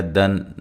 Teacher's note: نون تنوین کا اظہار ہے، غنہ نہیں کریں گے